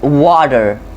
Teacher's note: when you find a T between 2 vowels, it oftenly sounds like as a D